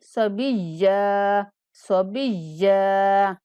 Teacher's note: یا کو سختی سے پڑھیں گے اور وقف کرنے کی صورت میں ہم اس کو تھوڑا سا کھینچ کے ادا کریں گے